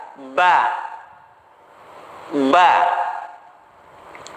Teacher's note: huruf ba, bibir atas bertemu dengan bibir bagian bawah · Namun ketika kita menempelkan antara bibir atas dan bibir bawah, dia itu hurufnya berada di bagian dalam bibir ataupun bibir bagian dalam